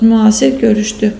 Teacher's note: Müasir görüşlü, burada l-d kimi tələffüz olunacaq bir fərq var. Bildiyimiz kimi yeni orfoqrafiya, orfoepiya qaydalarına əsasən deməli, müxtəlif cinsli qoşa saitlərdən olan ÜA səs birləşmələrində sait düşməsi və uzanma müşahidə olunmur.